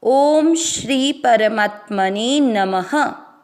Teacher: परमात्मनि नमः, दोनों अक्षर पूरे, दोनों में अ मिक्स करेंगे। म में अ की मात्रा तो विसर्ग को पढ़ेंगे ह